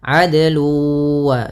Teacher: Kemudian pada lafal nun ketemu wau, ada bacaan idgham bigunah lagi, yaitu suara tanwinnya masuk kepada huruf wau . Adlu sambil ditahan huruf wunnya.